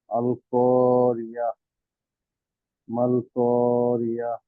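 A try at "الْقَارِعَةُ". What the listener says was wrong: রি আ না কিন্তু আইন, আইন। আমরা আস্তে, আস্তে পড়বো। আল করিয়াহ।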